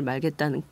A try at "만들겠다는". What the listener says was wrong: 발음 잘하셔야 돼. 국민의 행복을 만들겠다라고 얘기하는데 지금 국민의 행복을 말겠다고 하셨어. 말아버리면 안 되고. 그러니까 행복한 대한민국을 말고 만들고가 아니라 말고